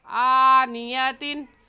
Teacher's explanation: तनवीन के बाद हुरूफ़ हल्की में से हमज़ा आ गया है, इस वजह से यहाँ पर हम गुन्ना नहीं करेंगे